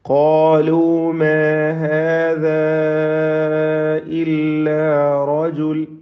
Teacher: ഖാലു മാ ഹാദാ ഇല്ലാ റജുൽ, മാ ഹാദാ ഇതിലെ ദീർഘം മദ് മുൻഫസിൽ ജായിസാണ്. 4-5 ഹറക്കത്തിൻ്റെ അളവിൽ അലിഫിനെ ദീർഘിപ്പിക്കൽ അനുവദനീയമാണ്.